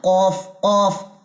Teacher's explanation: जब जुबान की जड़ या जुबान का आखिरी हिस्सा अपने मुकाबिल तालू के नर्म हिस्से से लगे तो क्या अदा होता है तो कफ अदा होता है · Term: मोटे वाला कफ